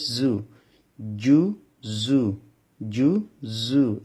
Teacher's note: জিম উচ্চারণ করার সময় জিহ্বার মাঝখানে উপরের তালুর সঙ্গে লাগবে